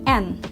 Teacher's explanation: Selanjutnya bunyi N, yang dihasilkan oleh alveolar dan nasal atau rongga hidung